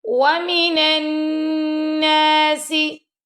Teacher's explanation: ومن الناس، واو کو پڑھتے وقت آپ کے لپس لائک اراؤنڈ شیپ ہونے چاہیے، اور نون زبر نون نن نون زبر نہ، یہاں پہ نون کے اوپر تشدید ہے، یہاں پہ ہم غنہ کریں گے